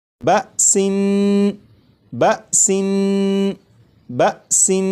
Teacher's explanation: جب تنوین کی ادائیگی کروں گا تو نون کو پڑھتے ہوئے زبان تالو سے لگا کر پڑھوں گا